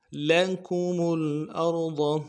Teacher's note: لکم میں میم کے پیش کو لام کے ساتھ ملائیں گے اگلے، اور ارض میں را کو موٹا کریں گے اور ضاد کو بھی موٹا ادا کریں گے. ضاد کو انتہائی نرمی کے ساتھ اور موٹا ادا کرنا ہے.